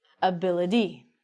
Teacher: the t pronunciation sometimes as i told you we actually say the t like a d